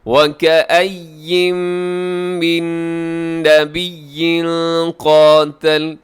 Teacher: نبیین قاتل یہاں تنوین کے بعد قاف ہے، یہاں کریں گے اخفا